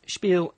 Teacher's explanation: The sh sound at the beginning with the spelling S-P, it's not really common in English words